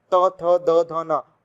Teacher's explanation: आप मेरे सामने बोलेंगे त थ द ध न, ऐसे ही मुंह बनाते हुए बोलेंगे त थ द ध न, तो आपको समझ में आएगा कि हमारी जो जीभ है वो बार बार किसको हिट कर रही है, त थ द ध न, दांत को टच कर रही है, तो ये दंत है।